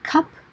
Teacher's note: you can pronounce the word cup as cup with that puff of air with the aspiration, or you can pronounce it as cup and it still means the same thing.